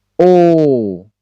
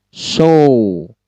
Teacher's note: Katakanlah seperti O, seperti itu. Monyong bulat O. Sama seperti O Indonesia tapi panjang. O. Seperti dalam kata show.